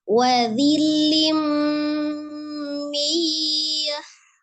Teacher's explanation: Hati-hati ketika mu monyongkan dulu kedua bibirnya karena dia dhamma dan ada menghadapi waw sukun kemudian mimnya sukunkan di posisi semula sesuai dengan makhraj mim ya yang bertemunya dua bibir.